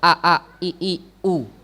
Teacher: Tahqiq itu adalah pengucapan huruf hamzah dari sumber makhrajnya, yaitu tenggorokan pangkal